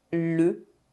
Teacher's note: The vowel sound is nasalised and we do not pronounce N or M. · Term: nasal vowels